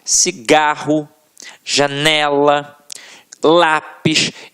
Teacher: paroxítonas em que a sílaba tônica está na penúltima sílaba